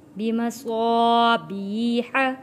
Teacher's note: حسیر، وَلَقَدْ زَيَّنَّا السَّمَاءَ الدُّنْيَا، وَلَقَدْ دال حروف قلقلہ ہے، وَلَقَدْ زَيَّنَّا السَّمَاءَ الدُّنْيَا بِمَصَابِيحَ، یہاں صا الف سے پہلے زبر ہے، حروف مدہ ہے، یہاں پہ ہم حروف مدہ کو کھینچ کر پڑھیں گے، صا اور صاد کو موٹا پڑھیں گے۔